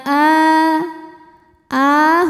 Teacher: Aa a hukumnya adalah mad badal karena ada Hamzah yang dipanjangkan cara membacanya a ini panjang dua harakat saja